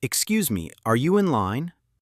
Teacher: use rising intonation for questions like, Are you in line?